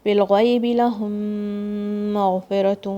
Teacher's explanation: This ghain comes from the top of your throat. Make sure you don't shake it.